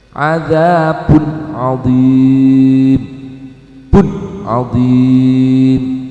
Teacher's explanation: karena memang sifat idhar halqi harus jelas, tidak boleh ada dengung sama sekali.